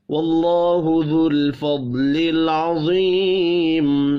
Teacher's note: اللہ کا نام یہاں بھی زبر کی وجہ سے پر پڑھا جائے گا